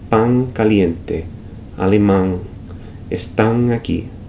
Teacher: there's an intensified nasalization of that final N